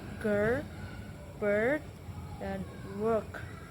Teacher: Posisi bibir netral dan sedikit terbuka santai, tidak tersenyum ee tidak tersenyum, tidak memoncong. Dan posisi lidah bagian tengah lidah diangkat agak menggantung di tengah mulut. Otot lidah sedikit tegang.